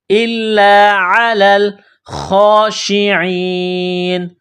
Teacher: خا کو موٹا کریں گے. جس طرح انسان گلے سے بلغم نکالتا ہے اسی طرح اس خا کو نکالیں گے. خا کے اوپر کڑا زبر ہے، ایک الف کی لمٹ میں کھینچنا ہے.